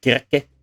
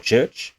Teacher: velar consonants that are made with the back part of the roof of the mouth, and they become palatal consonants that are made with the front of the roof of the mouth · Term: palatalization